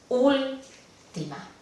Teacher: la sílaba que recibe la mayor intensidad es no la última, ni la penúltima, pero la antepenúltima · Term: esdrújulas